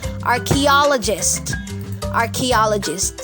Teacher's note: Ang stress po ay nandito sa third syllable.